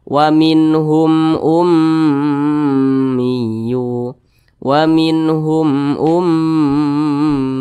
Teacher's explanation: huruf mim maka semua hukumnya adalah namanya izhar syafawi Nah jadi izhar syafawi itu dibaca jelas tidak berdengung nah ini mim sukun di depannya bukan huruf ba bukan huruf